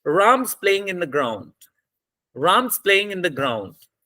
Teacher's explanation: So in this sentence, there are three stressed words. Ram, playing, in playing, play, and then ground. · the time between Ram and play and ground must be the same, must be the equal.